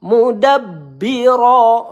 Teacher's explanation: Nah, ba bertasdid kita tekan terlebih dahulu. Mudabbiro ro ya satu ayunan kita baca tebal.